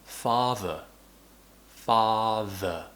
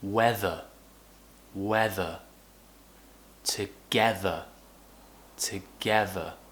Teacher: feel your tongue move in between your teeth and use your voice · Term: voice th